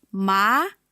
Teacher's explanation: Second tone is going up.